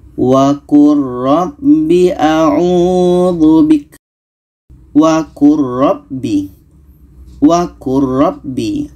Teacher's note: Di sini ada lam bertemu ra, maka bunyi lam ini kita masukkan ke ra. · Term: Lam masuk ke ra